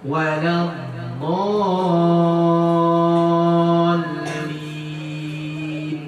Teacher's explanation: Huruf bertasdid di waladdallin itu tasdid ke huruf lam ada nabar namanya. Ada penekanan, ada nabarnya.